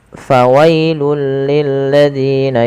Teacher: Fawailul, ya, awalnya fawailun, karena bertemu dengan huruf lam maka tanwinnya dimasukkan ke huruf lam dan diganti dengan huruf lam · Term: idgham